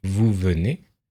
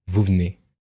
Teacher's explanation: on a tendance à couper les E pour raccourcir les mots. Par exemple, si vous dites vous venez, en général, on va le contracter et on va dire vous venez. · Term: E caduc